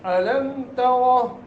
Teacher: अलम तरा ताए ता नहीं पढ़ना ता अलम तरा रा को मोटा करना है